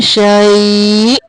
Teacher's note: حمزہ کو جھٹکا دیں گے